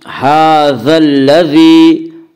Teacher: یقال ھذا الذی، ھذا کے اوپر کھڑا زبر ہے، کھڑا زبر کو 1 الف کے برابر کھینچ کر پڑھیں گے